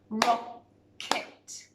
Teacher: the k sound comes at the end of the first syllable so rock and then so it comes at the end of